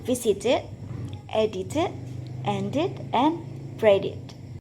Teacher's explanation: If the last letter of the word is spelled with D or T, the ed is pronounced as a separate syllable with an ed sound. It rhymes with kid and lead. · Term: the ed sound